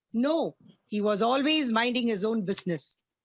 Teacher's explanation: No, it's a falling tone, minding his own business, a falling tone.